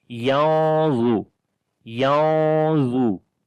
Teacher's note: The za we read also in heavy because this is isti'la letter.